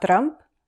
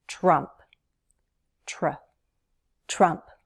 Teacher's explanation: Don't roll your R, don't trill your R, not Trump, Trump.